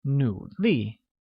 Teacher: pronounced with a falling rising tone on U and a falling tone on I